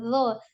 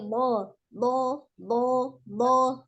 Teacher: bo bukan dengan menjulurkan ujung lidah ya, bukan lo, tapi bo sama mengangkat pangkal lidah juga. Nah, naik ya, termasuk huruf yang tebal. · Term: huruf bo